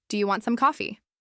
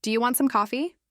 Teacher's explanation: Now try again, but this time raise your voice just a little at the end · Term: simple rise